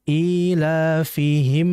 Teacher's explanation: Perhatikan pada mim ketemu huruf ro itu namanya adalah izhar syafawi. Artinya adalah dijelaskan mimnya tapi masih ada unsur ghunah pada mim.